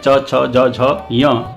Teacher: च वर्ग का उच्चारण स्थान होता है तालु